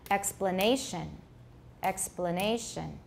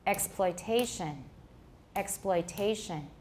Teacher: the difference in rhythm between explanation and exploitation is that the second syllable of explanation has a reduced vowel but this but this syllable exploitation has a full vowel let's